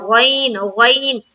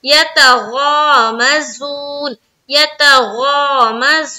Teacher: गैन जो है ना मोटे हरूफ में से है, ठीक है, तो गैन को मुंह भर कर बोलना है